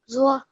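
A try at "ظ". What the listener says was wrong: There is no wow sound within it, okay? Zo.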